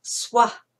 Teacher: you aspirate the end swah because we're pronouncing the h